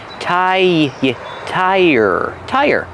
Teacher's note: when we link these sounds we use the Y sound